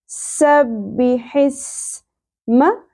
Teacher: حس ہے کو اپنے وسط حلق سے ادا کرنا ہے، حس. اور سین میں سیٹی کا ایلیمنٹ کلیئر ہونا چاہیے